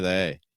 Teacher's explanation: You can barely even hear the th, right?